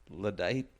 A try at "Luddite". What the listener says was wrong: You were doing the emphasis wrong.